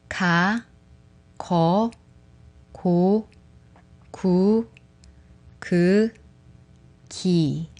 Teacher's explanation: the back of the tongue touching the soft palate, the upper back part of the roof of your mouth. Its sound is similar to k in English. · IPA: /k/